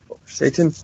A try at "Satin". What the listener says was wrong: Satin. Like satin sheets. Because if it's Satan, it'd be with an A. I believe it has an I in it.